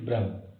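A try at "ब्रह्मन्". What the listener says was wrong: Brahm or Brahman? When I've said Brahman all this time, you've said Brahm. Brahman,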